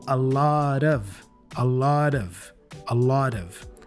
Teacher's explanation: so the T the final t for lot sounds like a flap T sound and then we connect that with the preposition of